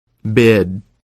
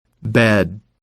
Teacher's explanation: Second, look at the tongue. For the I sound, the tongue is raised high in the mouth. For the E sound, the tongue is in the middle of the mouth.